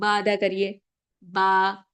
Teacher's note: lips का जो inner part है वहां से आपका बा का मखरज अदा होता है